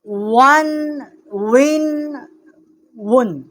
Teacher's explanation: واو جو ہے دونوں ہونٹوں کے نا تمام ملنے سے جو ہے اس کا مخرج ہے، اس کا مخرج ادا ہوتا ہے۔